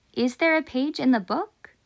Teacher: it should be pronounced with a rising intonation just like we do in english